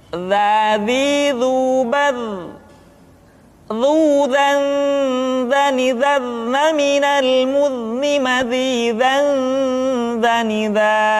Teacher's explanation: Diucapkan dengan menyentuhkan ujung lidah dengan dinding dua gigi seri bagian atas seperti kita mengucapkan huruf tha. Ujung lidah boleh ditampakkan ataupun tidak nampak.